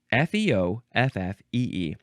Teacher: The second syllable is always emphasized, and the first syllable is fe or fi